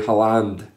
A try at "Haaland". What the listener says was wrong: Haaland. Well, you added an E that's not there.